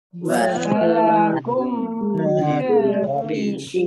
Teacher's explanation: mim sukun bertemu dengan huruf fa, bacaan idhar safawi dibaca jelas